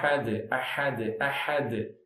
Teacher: அஹதுன் என்பதை நிறுத்தும் பொழுது அஹத் அஹத் அஹத் கல்கலா